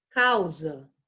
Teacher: Eu quase não escuto o U, né? · Causa, causa. Aqui a gente sabe que o A tá uma vogal muito mais forte do que o U, que é uma semivogal. Portanto, elas vão ficar juntinhas.